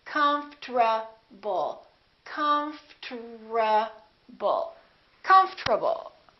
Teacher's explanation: The O disappears, but then there's one more very strange thing that happens, and that's the RT becomes a TR.